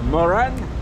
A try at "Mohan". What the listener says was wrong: Not Moran, Mohan. H. You know, it sounded like, yeah, here is Moran today.